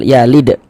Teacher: Huruf dal sukun mantul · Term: qalqalah sugro